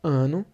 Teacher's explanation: o A é a vogal, a sílaba tônica, a vogal tônica, né? E o O é a átona, a menos forte.